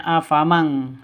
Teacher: Samar didengungkan siap-siap ke huruf kafnya. Nun matinya ditambah dengan ng seperti membaca eng gitu ya. Afam sehingga bacanya afamang seperti itu. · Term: ikhfa hakiki